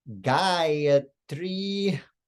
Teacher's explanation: the first ah is long the second uh is short and the final syllable e is also long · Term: long vowels